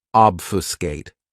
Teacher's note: this verb has three syllables and the stress is on that first syllable